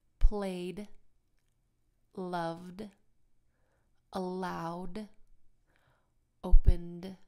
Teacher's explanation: All of these end with a very strong D sound at the end. In this case, the vocal cords kind of vibrate.